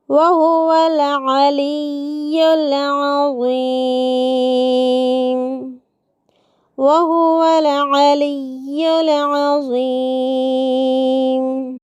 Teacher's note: وہو العلی میں عین کو حمزہ بنا دینے سے بچانا ہے، ولی میں یا کے تشدید کو مد نظر رکھنا ہے، عظیم میں عین کو حمزہ بنانے سے، وا کو زا بنانے سے بچتے ہوئے